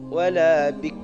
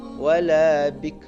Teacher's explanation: Jadi jangan wala bik, tapi harus ar, wala bikr, tapi tipis